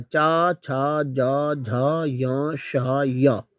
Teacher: जीवा के अगले हिस्से को कठोर तालु से टच कर रहे हैं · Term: तालव्य व्यंजन